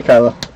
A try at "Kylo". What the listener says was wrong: It's not Kylie, it's Kylo. No, you said Kylie.